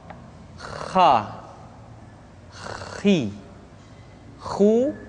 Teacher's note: di pangkal tenggorokan diucapkan dengan mengalir nafas